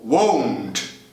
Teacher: No caso de won't, will, not, você tem aí um ditongo. 2 sons de vogal.